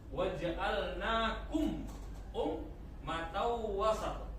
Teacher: ini mim mati bertemu alif. Namanya izhar syafawi. Jadi harus jelas dibaca, enggak boleh dengung, harus jelas. Waja'alnakum matau wasat.